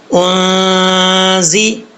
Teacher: اب یہاں پر نون ساکن کا اخفا کریں گے، آگے زا زیر زی، زا جو ہے حروف صفیریہ میں سے سیٹی کے ساتھ پڑھا جائے گا